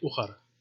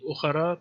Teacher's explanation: normally in prose you wouldn't pronounce before a speech pause the final vowel, so you would just say ukhar, even though there is a case ending ukhara, but you would skip that.